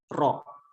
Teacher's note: huruf ro itu dengan menggetarkan ya, dengan menggetarkan ujung lidahnya di bagian mulut bagian atas